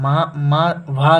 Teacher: वह सघोष महाप्राण होता है।